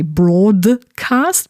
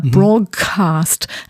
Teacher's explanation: And we also have hybridity, by the way, on the level of sounds, because if you think about words in connected speech, for example, the word broadcast, sometimes people might not say broadcast, but broadcast, and produce a g sound instead of the d